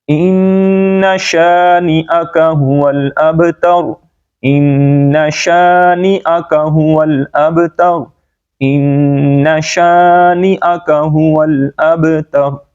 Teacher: با پہ کلکلا آواز لوٹ کے نکلے گی، راہ کو موٹا پڑیں گے، اور یہاں پر ہم نے حمزہ کا ساؤنڈ کرنا ہے، یا کا نہیں.